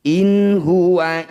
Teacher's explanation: bunyi nun sukun ini baca dengan jelas tidak usah dengung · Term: izhar halq